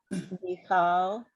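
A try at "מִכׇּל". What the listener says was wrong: So that's a K. That's a hard K sound because there's a dot in there.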